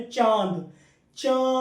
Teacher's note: जब आपने बोला तो आप नाक के स्वर भी बोले और मुंह से भी बोले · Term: अनुनासिक